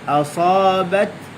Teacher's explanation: Asa ada lekuk tengah lidah. Asabat bat hujung lidah digusi. Sempurna dia berlaku syiddat tahan suara, lepas tu dia lepaskan angin.